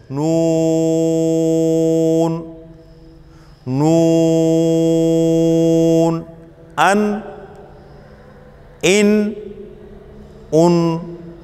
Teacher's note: طرفۃ اللسان، زبان کا کنارہ جب ثنایا، رباعی اور ناب کے مسوڑوں سے لگے، یہ ہے نون کا مخرج۔